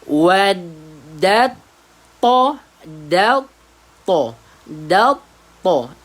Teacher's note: Masukkan huruf dal ke dalam huruf to yang bertanda sabdu. Dal to. To bertanda tebal.